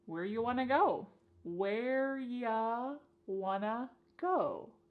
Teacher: So, this is a similar reduction to our first question. You becomes y and want to becomes wanna.